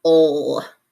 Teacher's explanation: Now we see the LE, and it's really pronounced more like an ol. So it sounds a little bit like the vowel and then the L sound.